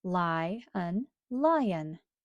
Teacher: The first syllable will be open, and the vowel will have a long sound.